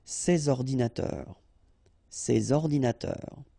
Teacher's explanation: so you should make the liaison between S and O